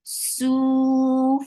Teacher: su for dhamma, circle lips, and make it 2 counts long.